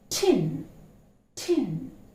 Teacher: See how when you utter, the tongue is literally touching the teeth ridge, the upper teeth ridge